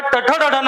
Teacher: मूर्धा म्हणजे आपल्या मुखातील जी वरची बाजू आहे, जिथं ट, ठ, ड, ढ, न म्हणताना आपली जीभ स्पर्श करते त्या अवयवाला मूर्धा असं म्हणतात.